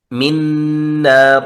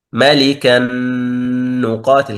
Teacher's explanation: كأننا ننطق النون مشددة. ملكا نقاتل، كأنها نون مشددة. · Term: إدغام كامل